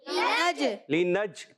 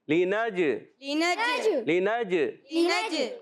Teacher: نون کو جیم سے ملانا ہے اور جیم کو ہلانا ہے، کیوں کہ جیم حرف قلقلہ میں سے ہے